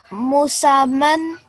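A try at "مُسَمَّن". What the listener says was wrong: So remember, here, we're not only going to think about how we change it. So the change will be the vertical fatha on the meme, but we also have to bear in mind that we have the shadda on the meme.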